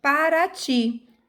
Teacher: exemplo eu tenho aqui ó em Paraty eu tenho três sílabas a tônica é a última sílaba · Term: oxítona